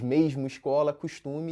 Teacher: Com isso, o som de S acaba virando X, que é parecido com CH ou X. Usando os termos linguísticos, a fricativa alveolar se torna uma fricativa pós-alveolar. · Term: palatalização